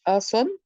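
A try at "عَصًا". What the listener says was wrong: नहीं, जब दो जबर आखिर में आते हैं तो सीधा पढ़ते हैं ना, असा।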